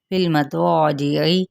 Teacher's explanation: فا کی زیر کو لام کے ساتھ ملائیں گے